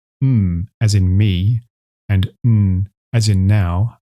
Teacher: two nasal consonants— /m/ as in “me” and /n/ as in “now”